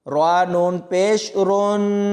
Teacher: را کو نون کے ساتھ ملائیں گے تو یہاں پر غنہ کر کے پڑھیں گے